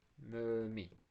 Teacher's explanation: Mömin sözündə mən ö-nü uzadıram, mömin. Vurğu isə i-nin üzərindədir.